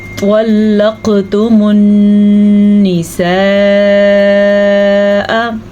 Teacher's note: نون پہ شد آ گئی ہے تو نون پہ غنّہ کریں گے۔ جب کبھی نون پہ یا میم پہ شد آ جائے تو غنّہ کرنا لازمی ہے۔